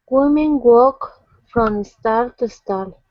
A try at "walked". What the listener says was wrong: Okay, get that T to jump out. Walked. Women walked from stall to stall.